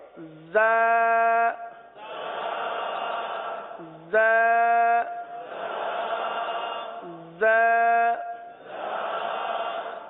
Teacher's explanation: زبان زیادہ تر نیچے کی جانب رہتی ہے اور نیچے کی جانب رہ کر زا سیٹی کی آواز کی طرح اس حرف کی آواز نکلتی ہے